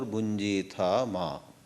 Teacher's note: when you have bunjithaha followed by ma, that visarga aha drops. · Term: sandhi